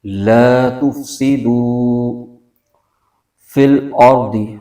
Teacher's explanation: واو ساکن سے پہلے پیش ہے، تو یہاں پر واو مدہ ہو رہا ہے، اس کو ایک الف کھینچیں گے۔